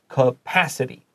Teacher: just so you know to stress the second syllable